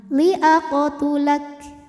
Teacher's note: Jadi setelah huruf K ada anginnya, tulak. Nah, untuk kaf yang sukun ya, anginnya itu belakangan.